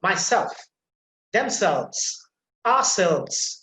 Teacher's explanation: to remember and also similarly if we find uh reflexive pronouns the second part of the reflexive pronoun will be emphasized